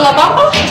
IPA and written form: la ˈβamba (La Bamba)